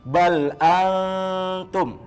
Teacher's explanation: jangan nanti nunnya jelas, jadi nunnya itu tidak jelas, kita siap ke huruf ta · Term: ikhfa hakiki